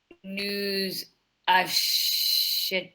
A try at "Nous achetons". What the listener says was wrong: But remember to do the liaison.